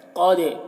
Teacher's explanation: قاف کو پر پڑھنا ہے، دال میں قلقلہ کرنا ہے